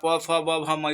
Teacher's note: प भ म इसको पढ़िएगा तो ओष्ठ से उच्चारण होगा